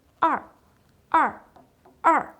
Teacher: Il est au quatrième ton, comme en accent grave en français. Sa prononciation descend rapidement et bref.